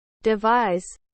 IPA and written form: dɪˈvaɪz (Devise)